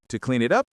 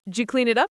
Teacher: You almost lose did. Exactly. Weak words disappear.